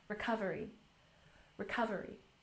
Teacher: let's emphasize the second syllable, recovery.